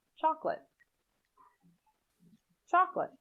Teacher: in chocolate the second o is not generally pronounced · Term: elision